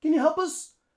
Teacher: notice how the P in help links on to the schwa in us